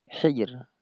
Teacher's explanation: Tapi hijr rnya tipis karena huruf yang yang pertama ini tipis